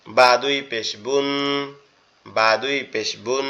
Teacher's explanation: বা টা আমাদের দুই ঠোঁট একসাথে লেগে উচ্চারিত হবে।